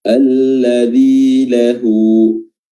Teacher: ha dhamir atau ha al-kinayah, dan dia memiliki mad silah shaghirah yang panjangnya 2 harokat